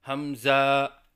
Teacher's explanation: آخر کی ہا کو الف سے بدل کر پڑھنا